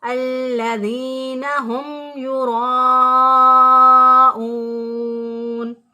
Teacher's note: ساکن کے بعد نہ میم ہے نہ با ہے، تو لہٰذا ہم نے میم کی آواز کو ظاہر کر کے پڑھا، اسے اظہار شفوی کہتے ہیں